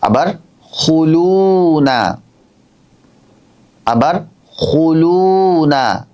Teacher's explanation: লু বলছি তখন এক আলিফ টান হচ্ছে না